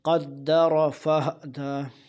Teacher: قدر، قدر را پہ یا زبر ہو پیش ہو تو اس کو موٹا کر کے پڑھتے ہیں۔ قدر، قدر دال پہ شد ہے، قدر جھٹکے کے ساتھ سختی سے، کیونکہ حروف اور سخت حروف میں سے دال۔